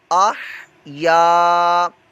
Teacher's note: یہ الف مدہ ہے، اس کو ایک الف دو حرکات کے برابر لمبا کر کے پڑھیں گے